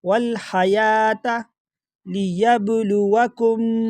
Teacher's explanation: با میں تھوڑا سا جھٹکے کے ساتھ پڑھیں گے کیونکہ یہ با جو ہے یہ قلقلہ میں سے ہے، حروف قلقلہ میں سے ہے۔